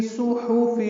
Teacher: صحف میں صاد پر ہے، ہا وسط حلق سے ادا ہوگا. دونوں کو معروف طریقے سے جلدی پڑھیں گے.